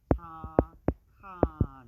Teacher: 받침이 기역하고 히읗하고 만나면 이것이 거센소리 키읔으로 줄어드는 걸 알 수가 있어요. 그래서 착한을 발음을 하면 착한 이렇게 발음이 되기 때문에 이런 음운 변동 현상을 우리는 뭐라고 배웠냐면 거센소리 되기라고 배웠기 때문에 1번이 답이 되겠죠.